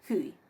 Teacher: Era el único caso de diptongo que teníamos dos vocales cerradas, hui